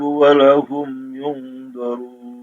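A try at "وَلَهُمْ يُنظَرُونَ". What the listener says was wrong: Mohon maaf, walahum lamnya panjang. La yukhaffafu anhumul adzab walahum.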